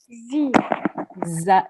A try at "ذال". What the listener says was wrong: This is not zal, it's dhal. Dhal.